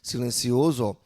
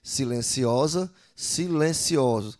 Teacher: A vogal O, né, no caso seria O, que é fechada, passa a ser aberta em expostas, aliás, exposta, exposto, expostos, silenciosa e silenciosa. Mudou o timbre, a vogal que era fechada, O, passa para a vogal aberta, O.